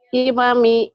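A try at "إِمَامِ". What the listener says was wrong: imami, pinter,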